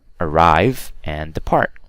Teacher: Because many 2-syllable verbs have the stress on the second syllable, but not all of them, right? Some examples are arrive and depart, okay? The stress is on the second syllable.